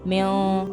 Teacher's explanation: इख्फा, नाक में आवाज लेके जानी